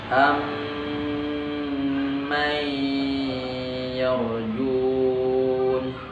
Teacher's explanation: Ada mim sukun setelahnya mim berharokat, seakan-akan di situ ada 1 mim yang ditasydid masuk ke dalamnya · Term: idgham mimi